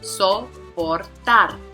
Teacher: So the prosodic accent is going to be on the third, again, which is going to be the last.